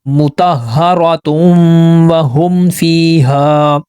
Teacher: تا کو واو سے ملائیں گے پیش کی آواز سے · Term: ادغام مال غنہ